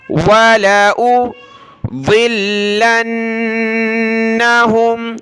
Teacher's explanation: ضاد کو لام کے ساتھ ملایا، لام کو نون کے ساتھ، لام اور نون دونوں کو سخت کرنا ہے، تشدید کی وجہ سے پلس میں نون کے اوپر تشدید ہے تو غنہ بھی کرنا